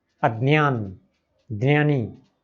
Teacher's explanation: महाराष्ट्र में हमारे जो बंधु हैं वो द न य, द्ने, द्ने की तरह बोलते हैं इसको, अज्ञान, ज्ञानी, इस तरह से।